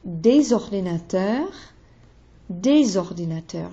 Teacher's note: Des ordinateurs, des ordinateurs. Now, ordinateur begins with a vowel. So I slide des ordinateurs, there's a Z sound.